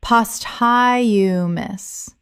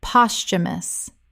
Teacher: Three syllables with the th making a ch sound in natural speech. The h is silent.